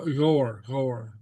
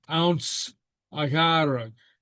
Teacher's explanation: I mean, you can hear the GH coming out of the throat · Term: silent guttural